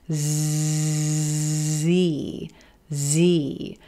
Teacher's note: the Z consonant sound made the exact same way as our s s except it's voiced